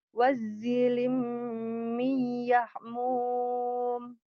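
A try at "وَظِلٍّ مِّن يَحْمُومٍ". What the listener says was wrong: Udah bagus tapi di yang pertamanya nggak ada tasjid. Wadzilim gitu. Nyamber ya. Wadzilim miyahmum.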